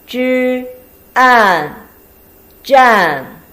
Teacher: the combination of zh and an, fourth tone